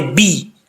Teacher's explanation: یہاں پر بہی، با کے نیچے زیر ہے، اس کو بے نہیں پڑھنا، با زیر بی، بے پڑھیں گے تو مجہول ہو جائے گا